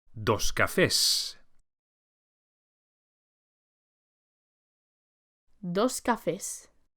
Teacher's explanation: please take care to pronounce the plural S as a S and not Z, as with many plurals in English